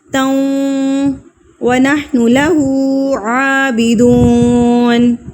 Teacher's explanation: تاؤں پہ یہاں پر حروف یرملون میں سے واو آ گیا ہے، تو یہاں پر ہم نے اس پہ غنہ کرنا ہے، یعنی کہ ناک میں آواز کو لے کر جانا ہے